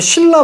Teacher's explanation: 니은이 리을로 바뀌어줘야 되고요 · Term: 유음화